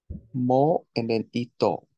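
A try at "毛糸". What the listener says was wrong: It's ke and then ito. You're right, that is mo from mofu. That's ke ito.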